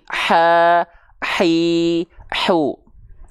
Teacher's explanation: H kecil di bagian tengah tenggorokan nafasnya berbisik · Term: ha kecil